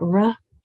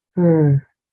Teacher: your jaw shouldn't drop it's not ra it's ER